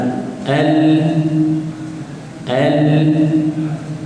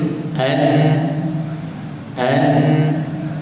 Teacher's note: ujung lidah menekan menyentuh pada gusi belah depan tu, bahagian dalam sebelah depan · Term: Lam, nun, ra